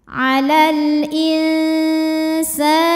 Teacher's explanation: lam dibaca dengan terang atau jelas atau disebut dengan idhar qamari